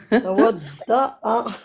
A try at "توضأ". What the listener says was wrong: Attention, c'est pas tawadda. Voilà, il y a une hamza, donc on va le prononcer. Tawadda'a.